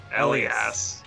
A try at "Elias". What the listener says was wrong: Elias. The L comes first.